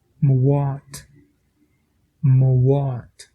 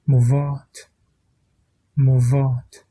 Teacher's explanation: L'option de dire le BH avec le son du W ou avec le son du V, ça dépend des dialectes, mais vous pouvez prononcer de la manière que vous voulez.